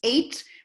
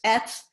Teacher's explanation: When it's more stressful, it's ate. When there's a little less stress on the word, it's et.